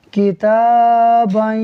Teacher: बा के साथ जो दो ज़बर का अलिफ है इसको हम नहीं पढ़ेंगे, हम बा को या से मिलाकर पढ़ेंगे